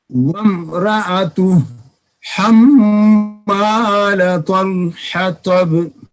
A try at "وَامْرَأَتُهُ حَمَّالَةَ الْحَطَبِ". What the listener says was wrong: نہیں آپ کے حاجی صاحب ایک تو میم کے اوپر غنہ نہیں ہوا اور ایک حطب کی طا صحیح نہیں نکلی. پھر پڑھیے.